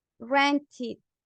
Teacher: at the end, tú en vez de decir ed, dices id